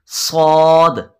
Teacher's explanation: इसको पुर पढ़ेंगे, मोटा करके पढ़ेंगे सौद, और ये भी ज़बान की नोक और दोनों दांतों के अंदरूनी किनारों से सौद अदा होगा।